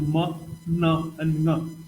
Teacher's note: the nasals, where the oral cavity is closed and the nasal cavity is open.